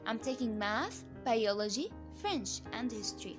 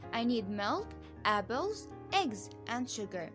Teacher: the voice rises at the end of each item but falls with the final item